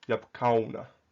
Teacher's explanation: So because all syllables in Arabic have to start with a consonant, a sukoon has to be followed by a consonant. So the wow with a sukoon on it becomes a consonantal w sound, which is why you need yabkauna.